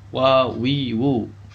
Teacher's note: kedua bibir atas dan bawah dirapatkan bersama-sama. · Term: huruf waw